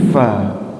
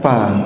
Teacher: Pada makhrajnya ujung gigi atas dengan bibir bawah. Keluar anginnya sama fa. Bukan pa. Beda kan?